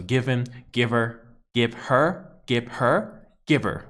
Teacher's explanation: The H even sounds a little bit silent as well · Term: connected speech